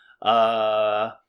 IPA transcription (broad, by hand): ə